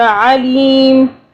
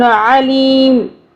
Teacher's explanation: عین کو حلق سے عین پڑھنا ہے، الف کی آواز پہ نہیں پڑھنا